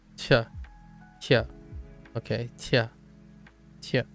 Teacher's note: It's made by keeping the tongue flat, okay, and putting the tip of the tongue behind the, oh, not again, and then blowing a puff of air out of the mouth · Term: the Q